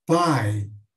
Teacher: é uma vogal forte e uma semivogal mais fraca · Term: ditongo decrescente